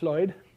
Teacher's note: Welsh has a voiceless L.